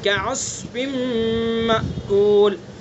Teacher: साद को पुर पढ़ेंगे चूँकि हरूफ मुस्तालिया में से है। ठीक है, मोटा करके पढ़ेंगे इसको गहराई के साथ